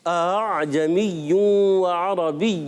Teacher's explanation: پہلا حمزہ تحقیق سے پڑھتے ہیں, سختی سے پڑھتے ہیں, اور دوسرا نرمی سے, حمزہ اور الف کے درمیانی شیپ میں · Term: تسہیل